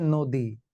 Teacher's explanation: পরবর্তী বর্ণে দীর্ঘ ই থাকার কারণে নয়ের সঙ্গে যে অ আছে, ন অ, সেই অটা ও হয়ে গেল, সংবৃতি হয়ে ও হয়ে গেল, তাহলে ওতে ওকার, দি নদী।